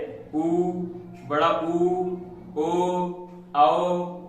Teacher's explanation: पहला वृत्ताकार, जिनके उच्चारण में होठों की आकृति वृत्त के समान बनती हो, यानी पूरी गोल, जैसे ऊ, बड़ा ऊ, ओ, आओ।